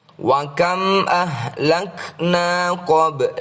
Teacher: Yang dimaksud dengan “ba sukun” adalah Qalqalah Sugra. Teks tersebut harus dibaca dengan menggunakan gema.